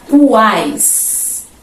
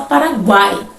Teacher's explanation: vamos ter uma vogal e ao lado dessa vogal duas semivogais OK observem a palavra uais a outra averiguei próxima delinquir próxima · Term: tritongo